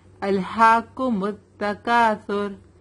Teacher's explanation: Lekin hum ra ko heavy padhenge. Kyun? Kyunki ra ke pehle wale letter ke upar pesh hai. را پر جزم ہوتا ہے اور را کے پہلے والے لیٹر کے اوپر پیش یا زبر ہوتا ہے تو ہم را کو ہیوی پڑھتے ہیں.